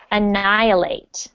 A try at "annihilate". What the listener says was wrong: That's good.